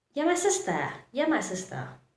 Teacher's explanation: The sound changes from you to yeah.